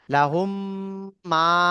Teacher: গুন্নাও হবে এবং মিমটা এক আলিফ টানও হবে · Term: গুণনা